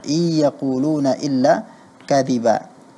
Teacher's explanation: Pada saat membaca nun sukun bertemu dengan ya, itu seyogianya ada ghunnah. Tapi tadi ghunnahnya kurang.